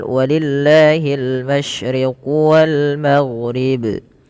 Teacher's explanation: Lafaz Allah apabila lafaz Allah didahului dengan huruf yang dia berharakat kasrah atau di bawah, maka lamnya dibaca dengan tipis. atau kita kenal dengan lam tarqiq.